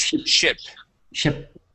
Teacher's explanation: we're gonna use the short I sound instead of sheep